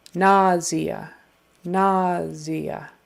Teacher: And the primary accent is on the first syllable.